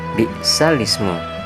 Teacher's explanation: memindahkan harokat kasrohnya hamzah ke huruf sukunnya lam sebelumnya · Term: nakel